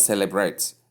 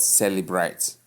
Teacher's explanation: correct stress is on the first syllable